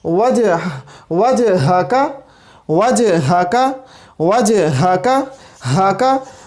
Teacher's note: ہا کا جو مخرج ہے وہ اقصی حلق ہے. ہا کا مخرج اقصی حلق ہے.